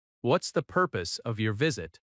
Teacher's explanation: In natural American speech, what is often becomes what's.